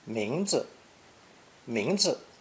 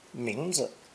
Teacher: The expression for name, therefore, is two characters, 名字, 名字, with the second character unstressed